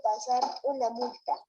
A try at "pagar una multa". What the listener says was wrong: Pasar. No ha dicho pagar. Lee todo.